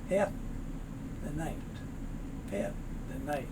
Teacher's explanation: You'll notice there's no L sound. It's just as if it was spelled H-A-F.